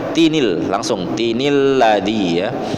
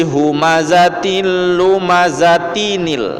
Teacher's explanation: Jadi nilnya tetap dibaca, tetapi jangan panjang, dia pendek. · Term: nun wiqayahnya